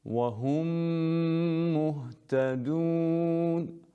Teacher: Qünnə də, yəni burun boşluğundan xaric olan səs 2 hərəkə miqdarında saxlanılır. Yəni, 2 hərəkə miqdarında biz qünnəni davam etdiririk.